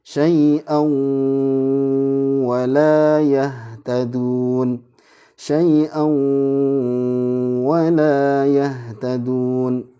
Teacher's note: Ada penanda tajwidnya dengan keterangan ini ada panjang 4 harokat, ada tahan 2, syai'au. Nah, ini idgham bi gunnah. Jadi ini ditahan ya, tahan 2.